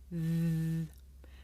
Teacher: The sound comes from between my tongue and my top teeth.